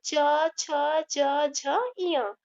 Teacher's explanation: च वर्ग का उच्चारण तालु से होता है।